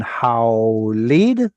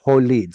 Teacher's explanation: But the combination ow in Hebrew turned into oh.